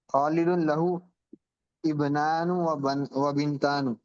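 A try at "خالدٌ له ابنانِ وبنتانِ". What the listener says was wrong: میں نے کیا کہا تھا کہ تسنیہ میں جو نون ہوتی ہے اس کے نیچے زیر پڑتے ہیں ہمیشہ۔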